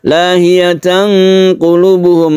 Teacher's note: ada tanwin bertemu dengan qaf, kita sebut dengan ikhfa, dan membacanya itu samar dan dipanjangkan atau didengungkan